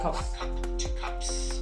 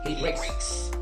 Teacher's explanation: the S you add also remains unvoiced